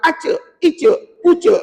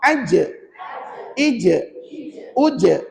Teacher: tegurlah eh salah bunyi kamu tu Kamu kena gunakan Tengah lidah ulama pesan nak sebut Jim Tengah lidah kamu ni angkat ke ke langit-langit maka bunyilah sebutan Huruf Jim tadi